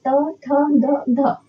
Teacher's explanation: वो व्यंजन कौन सा है जिनकी जीभ की जो नोक होती है वो ऊपरी दांतों को टच करती है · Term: दंत व्यंजन, दंत्य व्यंजन